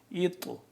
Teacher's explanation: طا کو موٹا پڑھیں گے، اوپر یہ جزم پہ نظر آ رہی ہے آپ کو بلو کلر کی، اس کو ہم طا موٹا بھی ہے اور اس کو ہم قلقلہ بھی کریں گے